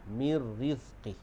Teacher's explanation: Kita masuk terus nun mati itu ke dalam huruf ra. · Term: idgham bila gunnah